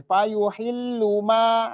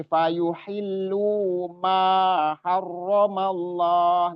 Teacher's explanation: Lu dengan ma sama dua harokat semua.